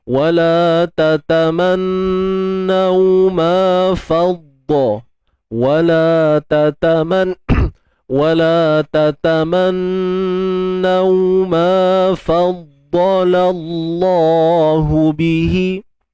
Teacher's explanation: Huruf dha kita kena tebalkan, sabdu pada dha ni.